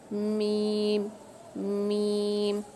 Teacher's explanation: मीम को अदा करते वक्त क्या हो रहा है कि नाक के पास से थोड़ी सी आवाज़ गूंज रही है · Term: गुन्ना